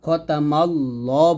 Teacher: তো এই আল্লাহ লেখার যে নিয়মটা, এই লামের আগে যদি জবর থাকে অথবা পেশ থাকে তাহলে ল বলতে হয়, খতামাল ল বলবে, লা বলা যাবে না, এটা মোটা করতে হয়, খ মোটা হবে লামটা মোটা হবে